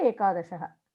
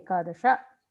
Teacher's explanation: Ekadashaha, there is no visargam there.